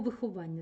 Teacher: між голосними відбувається подовження приголосних